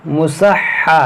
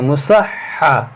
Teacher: ये हा मुशद्दद है, इस हर्फ को 2 बार पढ़ें